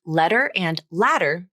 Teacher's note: The flap is made by quickly flapping the tongue tip against the bumpy ridge just behind the front teeth. That place is called the alveolar ridge, and it's at the very front of the roof of the mouth.